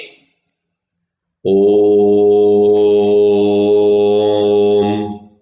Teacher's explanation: ओ अक्षर का प्रयोग हमने खींच कर किया, तो इसमें समय भी बहुत ज्यादा लगा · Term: लुप्त स्वर